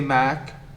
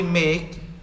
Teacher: the opening of your mouth narrows becomes smaller and you feel that the tongue in your mouth has been raised compare mac and make say mac open your mouth now say